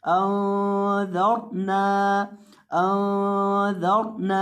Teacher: और दाल को आपने नरमी के साथ पढ़ना है क्योंकि दाल नरम हुरूफ में से है। और रॉ को यहाँ पुर करेंगे, रॉ को मोटा करके पढ़ेंगे